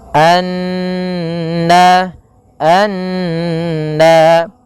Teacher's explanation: tasdid Iya kita namakan dengan hukum bacaan gunah cara membacanya yaitu kita menahan suara n ya sepanjang dua harakat baru dilepaskan